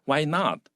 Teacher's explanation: 那 这 个 地 方 你 会 强 调 那 个 not， 因 为 妈 妈 不 准 你 做 嘛， 那 你 要 强 调 为 什 么 不 可 以 呢？